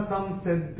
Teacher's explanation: और ये जो तीसरे चरण में स के ऊपर अनुस्वार जो आ रहा है उसके बाद का अक्षर भी स है और अनुस्वार के बाद जब स आएगा तो अनुस्वार का उच्चारण होगा म।